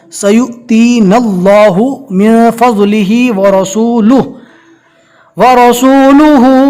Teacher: نون کو ڈائریکٹ اللہ کے لام سے ملا دیں گے، نون کو کھینچنا نہیں ہے